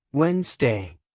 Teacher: the middle D is silent in casual speech